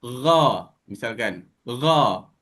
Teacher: Gha ini anggota yang kita gunakan adalah kerongkong